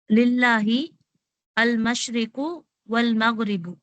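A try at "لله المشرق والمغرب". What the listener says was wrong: அதாவது இப்ப ஏன் நீங்க அல் மஷ்ரிக்னு சொல்றீங்க? சேர்ந்து வரும் பொழுது இந்த அல்லல் இருக்கிற ஹம்சா ஹம்சத்து வாசல் விழுத்தாட்டணும். லில்லாஹில் மஷ்ரிகு வல் மக்ரிபு.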